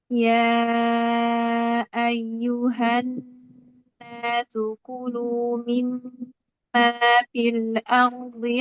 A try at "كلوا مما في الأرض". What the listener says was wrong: Tanpa qalqala fil kulu ulang.